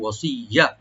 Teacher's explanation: ওয়াসিয়াতি ওয়া ওপেন রাখবেন, সোয়াটাকে একটু ডিপ করে আমরা ইয়ার সাথে মিলাবো, ওয়াসিয়া, ইয়াটাকে ডাবল করে পড়বো, টান হবে না · ইয়াটাকে ডাবল করে পড়বো, টান হবে না। আর তুই এখানে তি, তাটাকে পাতলা করে এখানে আমরা ইদগাম উইথ গুন্না করবো।